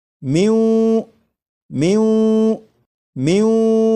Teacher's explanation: نون ساکن کے بعد جب واو آ جائے تو نون ساکن کو واو میں ادغام کریں گے، ملا کر پڑھیں گے اور غنہ کر کے پڑھیں گے